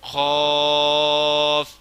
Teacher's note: اس کو موٹا کر کے پڑھنا ہے حلق کی طرف سے، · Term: بڑا کاف